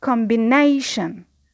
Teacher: So combination, the stress on nay, and because we have two syllables before the primary, we need to add another level of stress, which is secondary stress, and we place it on com